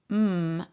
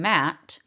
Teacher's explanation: For instance, if I'm saying the sound m as in matt, my lips are blocking the airflow